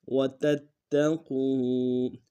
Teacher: وَتَتَّقُوا میں تا کو اگلے تا کے ساتھ ملانا ہے، تا کے اوپر تشدید ہے، زور دیں گے، قاف کو واو کے ساتھ ملانا ہے، موٹا ادا کرتے ہیں، واو مدہ ایک انداز میں کھینچیں گے.